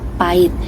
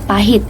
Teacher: pada P KBBI kata yang benar adalah kata pahit yang berarti tidak ada penghilangan fonem konsonan H